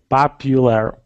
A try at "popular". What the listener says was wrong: Popular. Not pop, but paw. Popular.